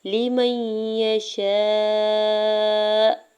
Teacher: لمن یشاء، لام کی زیر کو بغیر کھینچے ہوئے ادا کرنا ہے۔ میم کے زبر کو یا مشدد کے ساتھ ملاتے ہوئے پڑھیں گے۔ یہاں پہ نون ساکن جو ہے وہ نہیں پڑھا جائے گا، ٹھیک ہے۔ · شین کے اوپر زبر ساتھ الف اٹیچ ہے، اس کے اوپر مد متصل ہے، 4 سے 5 حرکت کھینچ کے ادا کرنا ہے اور حمزہ کے اوپر پیش ہے۔ یہاں پہ وقف کرنے کی صورت میں حمزہ کو ساکن کرتے ہوئے ہلکا سا جھٹکا دیں گے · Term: ادغام مع غنہ